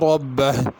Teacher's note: ربہ میں را پر پڑھی جائے گی اور ہا بھی آخر میں ظاہر کرنی ہے